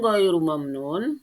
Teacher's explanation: Ajrun ghairu dibaca ghain itu dibaca jelas karena itu termasuk huruf izhar